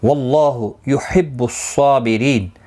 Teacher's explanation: اللہ کا لام زبر کی وجہ سے پر پڑا جائے گا، اس کے اوپر کھڑی زبر بھی ہے، ایک الف کی مقدار کے برابر کھینچ کر پڑھیں گے.